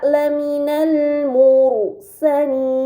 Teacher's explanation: terdapat ro sukun sebelumnya harakat damah yang berada di huruf mim maka ro tersebut harus dibaca secara tebal